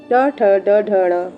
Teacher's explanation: ट, ठ, ड, ढ, ण मूर्धा से बोला जाता है।